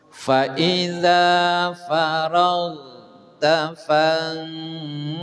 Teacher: ragh ditahan jangan sampai ada qalqalah. Faiza faragh, nah, jangan sampai begitu ya.